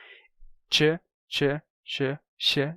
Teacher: Terminou que o som do tch foi relaxando.